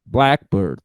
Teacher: the stressed syllable is black